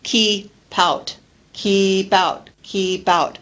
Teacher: linking the final consonant sound of keep with the next word which begins with a vowel sound